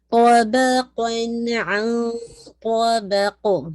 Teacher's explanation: دونوں اس کے سائڈ پہ ہیوی لیٹرز ہیں، لیکن بیچ میں با ہیوی نہیں ہونا چاہیے